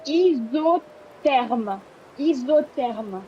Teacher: It's a remnant of like the Greek, so we don't say the H. And the S in ISO is pronounced like it's a Z. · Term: H is always silent